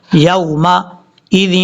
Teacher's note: یا کو جب واو سے ملائیں گے تو یہاں پر لمبا نہیں کرنا ہے، اس کو شارٹ کٹ کر پڑھنا ہے کیونکہ یہ واو لین ہے، یومئذ، لال کو واو سے ملاتے